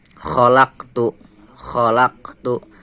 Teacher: Kenapa karena Qalqalah call berharakat Sukun dan posisinya ditengah kalimat dan cara membacanya dipantulkan secara ringan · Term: Qolqolah Sugro